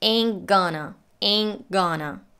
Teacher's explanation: She drops the T in ain't and links the nasal N right into the gonna